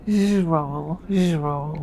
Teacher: The first syllable sounds like J, as in the S in measure. J. The second syllable sounds like a roll or roll.